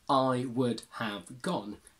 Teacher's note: have becomes weak and goes of and would can stay wood or simply D so you can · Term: weak form